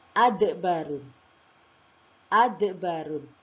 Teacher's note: Ketika dal berharokat sukun. Nah, di sini akan tampak sifat kolkolahnya.